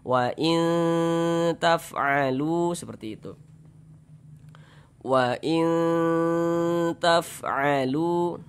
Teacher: Tapi bunyi n-nya tuh disamarkan. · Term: ikhfa